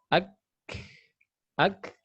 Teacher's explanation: Huruf kaf ini pertengahan antara langit-langit lunak dan langit-langit keras. Disitulah huruf kaf.